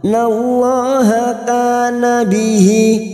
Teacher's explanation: Fa innallaha lam jalalah yang didahului fathah kita baca tafkim.